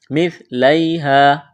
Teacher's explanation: یا لین ہے، کھینچنا نہیں ہے، الف مدہ ہے، ایک الف کے برابر کھینچنا ہے۔